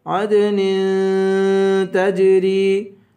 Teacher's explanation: عدن پہ اخفا کریں گے